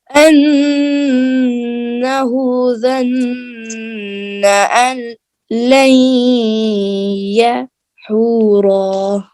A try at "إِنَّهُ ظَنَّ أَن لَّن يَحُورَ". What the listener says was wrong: یحور، را کی زبر ختم ہو جائے گی نا، ایک زبر ہے نا. انہ ظن ان لن یحور. ال پہ دیر نہیں لگے گی، لائن پہ دیر لگے گی. انہ ظن ان لن یحور.